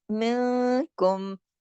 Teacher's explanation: नून साकिन के बाद काफ आया तो ये अख्फा हकीकी हुआ